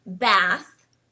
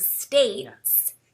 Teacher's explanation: in contrast to a word like bath which uses a short a sound the word States uses a long a sound so we really enunciate that states that long sound States so